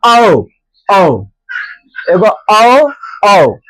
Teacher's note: इसका उच्चारण कहां आ रहा है? कंठ और ओष्ठ से।